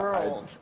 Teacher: Right, that R sound, yeah, world. I sort of enlarged that R sounds twice as long as it should be